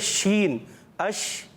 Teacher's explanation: منہ میں آواز پھیلتی ہے جو شین میں ہوتی ہے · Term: تفشی